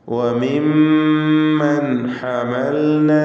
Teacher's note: മിൻ ദുർരിയ്യതി ആദം, മിൻ ദുർരിയ്യതി ആദം വമിമ്മൻ ഹമൽന, അതിൽ വന്ന മീം മുശദ്ദദ, ഷദ്ദ് നൽകപ്പെട്ട മീമിന് 2 ഹറക്കത്തിൻ്റെ അളവിൽ മണിച്ചുകൊണ്ട് ഉച്ചരിക്കുക. വമിമ്മൻ എന്നതിലെ അന്ത്യത്തിലെ സാക്കിനത്തായ നൂൻ ശേഷം ഹ വന്നതിനാൽ ഇൽഹാർ ഹൽക്കി മണിക്കാതെ വെളിവാക്കണം.